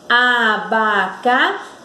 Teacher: o som que sai da nossa boca, que é pronunciado, ele saiu com mais força no xi. Abacaxi. Então, esse impulso está no xi. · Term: sílaba tônica